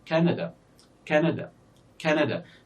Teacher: we have 3 syllables in this word, Canada, and the first syllable is stressed here. That means because it's longer, we can say Canada, Canada, Canada. · So the first syllable here is stressed because it is longer than the other syllables.